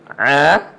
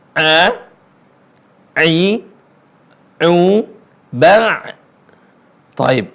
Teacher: a yang dalam atau yang disebut dengan a keluarnya di tengah tenggorokan